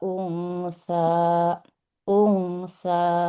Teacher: di kata unsa, ini nggak boleh lebih dari 2 harokat ya. 2 harokat saja cukup.